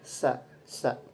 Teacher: Kemudian huruf sin itu makhrajnya masuk asnani laswi, sama seperti zai. Kemudian ihtikaki juga, tetapi dalam pita suaranya itu mahmus, ada getaran ketika diucapkan.